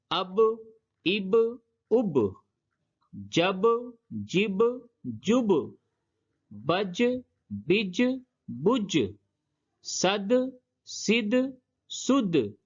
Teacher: جب جزم ہو یعنی کہ یہ ساکن ہو تو اس کو ادا کرتے وقت اس کے مخرج پہ ٹکر دیتے ہیں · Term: قلقلہ